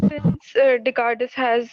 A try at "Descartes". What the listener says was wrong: Descartes, S is silent.